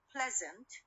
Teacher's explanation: the stress on the first syllable of this word